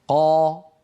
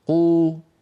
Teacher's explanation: أليس قا كمية الهواء التي تملأ الفم أكثر من كمية الهواء في قو